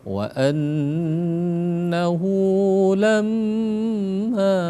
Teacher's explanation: Jadi ada nun bertasdid dan mim bertasdid, wajibal gunnah